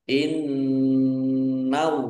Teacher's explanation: nun tasdid bacaan gunnah atau mendengung, dibaca mendengung, ditahan agar tampak pendengungannya.